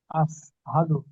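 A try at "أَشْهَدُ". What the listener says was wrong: ওটা আপনার সিন আসছে, চেষ্টা করবেন ওটা শিন করে নেওয়ার জন্য, মোটা আওয়াজে শিন। সিনের পরে যেটা হচ্ছে শিন।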